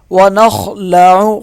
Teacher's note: خا کو موٹا پڑھیں گے